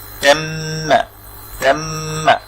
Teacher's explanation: মিম তাজদীদ যদি হয় সেটাকে একটু গুণনা করতে হয়, অর্থাৎ একটু নাকে সাউন্ড করে